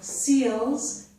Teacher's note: So seals and smile start with s, and the lips are not rounded.